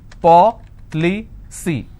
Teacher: Now here the rule says I need to stress on the third from right, which means I will stress on PO.